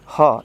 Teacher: मुंह को खोल के, और आपके टंग को नीचे दबा के रखना है, नीचे वाले पैलेट के साथ, और गले से ह साउंड करना है। सिंपली एक लंबा श्वास भरे, अभी हा साउंड के साथ इसको छोड़ेंगे।